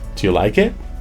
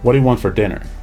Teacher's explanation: being able to modify the pitch to go either rising as in do you like it or go you know low as in what do you want for dinner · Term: intonation